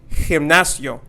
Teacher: the G sound makes that H sound and not the G sound. So we're not going to say gimnasio, but we are going to say gimnasio.